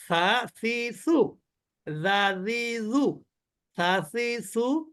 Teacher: জিহ্বার আগাটা একটু বের করতে হবে · জিহ্বার আগা উপরের দাঁতের আগা এখানে যুক্ত করলেই এই অক্ষরটা উচ্চারিত হবে